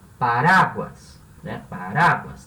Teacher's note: Porque uma palavra que termina em S e a última sílaba não é a sílaba tônica. A sílaba tônica é ra